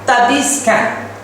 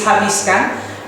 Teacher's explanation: The H sounds is replaced by T sounds.